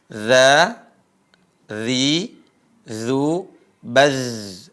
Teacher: Ini perhatikan ujung lisan ketemu dengan ujung gigi seri atas. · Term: huruf za